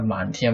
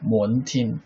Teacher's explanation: Even now in Cantonese, the man tian was pronounced like mon tin